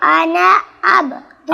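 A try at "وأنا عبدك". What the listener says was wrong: আব হবে না, আব হলকের মধ্যখান থেকে 2 নম্বর মাখরাজ। আবদুকা, ওয়া আনা আবদুকা। আব হবে না, আব আব, আইন, আবদুকা। ওয়া আনা আবদুকা, ওয়া আনা আব এভাবে। ওয়া আনা আবদুকা।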